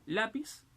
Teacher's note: la mayor fuerza de voz es en la. Y te das cuenta que no termina en NS vocal, por eso que se tilda.